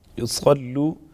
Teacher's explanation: لام مشدد ہے، مضبوطی کے ساتھ ذرا رک کر ادا کریں گے ، وہ مدہ ایک الف کے برابر، فليصلوا اگین صاد پر